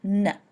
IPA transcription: n